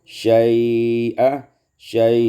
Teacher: dibaca tawassut atau isba', panjangkan lin